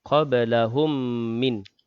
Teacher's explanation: ba yang sukun dalam kalimah qablahum, qalqalah sughra, berdetak kecil.